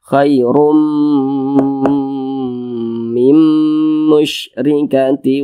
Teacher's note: Cara bacanya sama dengan cara memasukkan kemudian disertai dengan gunnah, disertai dengan dengungan. Ini bunyi nun sukunnya dimasukkan ke huruf mim. Jangan dibaca min musyrikatin, jangan dibaca min, tapi langsung masuk ke huruf mim, dibaca mim. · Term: idgham bi gunnah